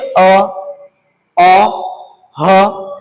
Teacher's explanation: आपका जीभ और पूरी तरह से स्थिर है तो आवाजें कहां से निकल रही है आवाजें आपका निकल रही है कंठ से